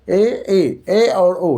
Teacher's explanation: अर्ध संवृत स्वर ए और ओ या अर्ध संवृत स्वर हुआ।